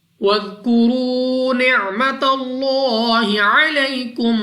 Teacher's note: ذال نرمی سے ادا کرنا ہے، اس کے بعد را ہے، را کے اوپر پیش، تو را کو پر یعنی موٹا پڑھنا ہے۔